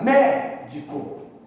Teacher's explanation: será proparoxítona, porque a sílaba mais forte é a antepenúltima